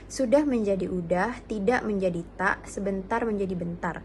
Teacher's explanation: Yang pertama, elisi awal. Elisi yang terjadi pada awal kata